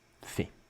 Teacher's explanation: Sometimes we just can't be bothered, and we drop the il altogether.